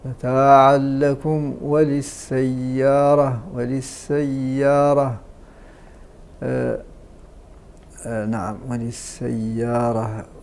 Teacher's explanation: الميم الساكنة قبل الواو حكمها إظهار، يسمى الإظهار الشفوي.